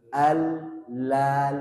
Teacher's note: lidahnya melebar bukan Lala Lala bahasa Indonesia